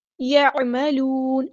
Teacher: عین کو وسطی حلق مڈل تھروٹ سے ادا کریں گے